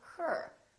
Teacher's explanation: this sound is produced with the uh sound the very short uh neutral sound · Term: r sound